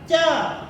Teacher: च आप ध्वनि करेंगे तो जीभ जो है तालु को स्पर्श कर रही है। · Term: स्पर्श व्यंजन